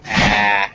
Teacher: Is where this vowel is made. It's in the front of your mouth and at the bottom of your mouth. So kind of like near your lower lip. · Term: ah sound